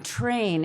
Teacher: It's an affricated sound that you pucker your mouth to make. The first sound in train is not t, it's ch.